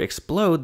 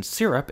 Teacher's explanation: in the word explode the emphasis is on the second syllable whereas in syrup it's on the first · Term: stress pattern